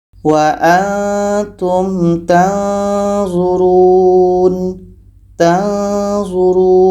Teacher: Jadi ketika kita dengungkan nun mati bertemu zo menghasilkan samar. Samar yang mendekati tempat keluar huruf.